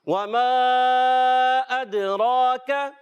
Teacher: را پر زبر اور پیش آنے کی صورت میں را موٹا ہو جاتا ہے اس کو بھی 1 الف کھینچ کر ادا کریں گے.